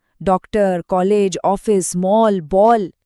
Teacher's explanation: आवाज ना तो पूरी तरह आ थी ना ही पूरी तरह ओ। यह इन दोनों के बीच की एक नई ध्वनि थी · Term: औ वाली ध्वनि